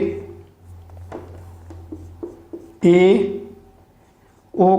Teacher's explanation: जब हम इनका उच्चारण करेंगे तो हमारा जो मुख है वह 50% तक खुलता है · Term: अर्ध संवृत